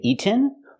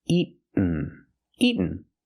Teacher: Make the stop T and go to the end directly.